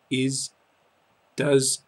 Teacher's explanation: almost always adding an s in English to the conjugation but the pronunciation is more like a soft Zed sound rather than a clean s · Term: soft Z sound